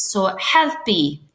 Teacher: Now, with a U, a lot of people say helpu, helpu, something like that, but it's actually help-y, okay? So you're saying E at the end.